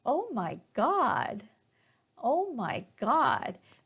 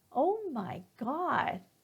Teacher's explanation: notice how my intonation keeps rising